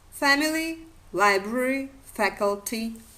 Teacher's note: the only stress on the third syllable from the end